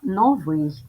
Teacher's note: приголосні звуки н твердий в - твердий й завжди м'який